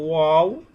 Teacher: দুই ঠোঁট হইতে অ বা মিম, অর্থাৎ যখন ঠোঁটটা গোল হবে, ঠোঁটটা গোল করে উচ্চারিত হবে ওয়াও বা, অর্থাৎ ঠোঁটের যে ভিজা অংশ, সেই সেই দুই ঠোঁটের